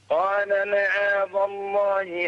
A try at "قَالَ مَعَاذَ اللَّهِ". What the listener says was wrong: فخم رقق الذال.